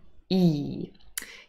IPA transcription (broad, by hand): i: